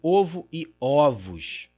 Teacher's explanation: Nós temos aqui uma oposição singular plural e também a mesma abertura, a mesma oposição entre o e o. · O S de plural está aqui, mas para além dele, nós temos uma abertura, uma distinção, um reforço com a abertura da vogal. Então, reforço à marca morfológica externa.